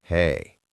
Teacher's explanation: If I say hey with a flat voice, I sound bored.